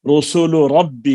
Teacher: لام کا مخرج اور را کا مخرج قریب قریب ہیں، دونوں زبان کے اندر ہیں، زبان سے زبان کا کنارہ لام میں بھی لگتا ہے، را میں بھی لگتا ہے۔ لام میں کچھ اس میں حافا کو دخل ہے، را کو پشت زبان کی طرف مائل ہوتی ہے، لیکن زبان کا کنارہ دونوں میں لگتے ہیں، تو یہ ان کے مخارج آپس میں قریب ہیں، تو یہ متقاربان ہو گئے۔